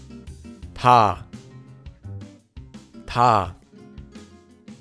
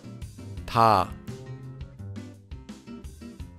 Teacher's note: This letter is similar to a T or a D sound in English, but it's not a hard T sound like in the word time, and it's not a hard D sound like in the word dog. It's between T and D, and is a bit softer.